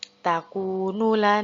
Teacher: jadi dengungnya tetap kita baca 3 harokat dulu Tahan lalu Kaf nya kita hamaskan